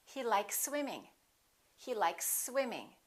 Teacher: You can prolong the s a little bit but don't pause don't interrupt the sounds and don't break the two words in half · we have an S likes and here we have another s when we have two same consonants we only pronounce one